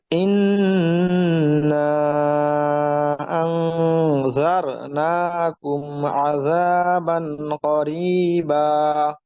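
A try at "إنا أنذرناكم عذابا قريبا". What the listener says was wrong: এই রটা কিন্তু ক্লিয়ার হয় না, এটা খেয়াল করবেন, হ্যাঁ।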